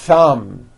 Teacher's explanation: in two beats one two thumb like that you see that notice how long I'm holding the th sound thumb it's not good enough just to put your tongue between